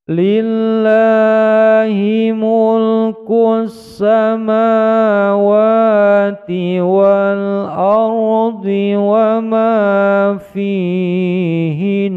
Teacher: Karena nunnya berharokat tasdid, maka menjadi bacaan gunnah musaddah, ditekan panjangnya dua ketukan.